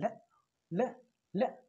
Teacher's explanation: तो हमने इसका शाब्दिक अर्थ ये लिखा ना कि अगल बगल आसपास से वे व्यंजन जिनका उच्चारण करते समय जीवा घोल हो जाती है, जीवा मसोड़ों को स्पर्श करती है और हवा अगल बगल से निकलती है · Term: पार्श्विक व्यंजन